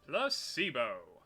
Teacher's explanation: The stress is on the middle syllable.